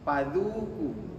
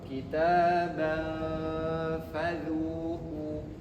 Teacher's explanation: fa ini makhrajnya gigi atas bertemu dengan bibir bawah, bertemu dengan bibir bawah. Jadi bukan bibir ketemu bibir. Kalau bibir ketemu bibir, nanti kita nyebutnya paduku, bukan fa.